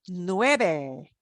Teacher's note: u e is almost like a w sound